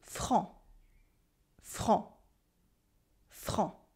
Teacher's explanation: You have a nasal en en, and a silent C at the end, even in the plural.